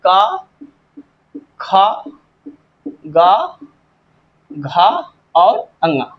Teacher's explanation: इनका उच्चारण स्थान कंठ है।